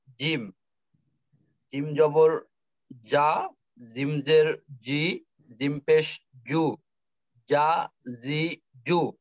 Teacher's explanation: ওকে। 6 নং মাকরাস জিহ্বার মধ্যখান তার বরাবর উপরে তালুর সঙ্গে লাগাই উচ্চারিত হয়।